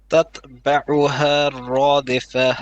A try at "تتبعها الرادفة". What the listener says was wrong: No, you're stretching the ha. You're saying ha. تتبعها الرادفة. Ha will be short.